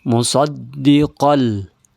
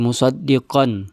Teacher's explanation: di atas huruf qo tanwin bertemu dengan lam. Berarti dia dilebur ke huruf lam. Dia idogam bila gunah. · Musaddiqal, langsung ke huruf lam, jadi tidak disebut lagi musaddiqan, ya, karena dia bertemu dengan huruf lam. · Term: idgham bila gunnah